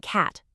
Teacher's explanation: Now drop your jaw and say ah like in cat. See your tongue is low and in the front.